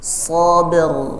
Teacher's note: Qalqalah ba-nya ada sabr, baru kemudian diikuti dengan ra yang tebal. Sabr. Namanya qalqalah sughra karena tengah kalimat dan langsung diikuti huruf selanjutnya.